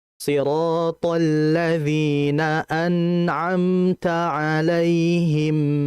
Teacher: Sifat tawasud nun, gunnahnya. Tetap dialirkan dengan gunnah yang tidak sempurna. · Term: gunnah naqisah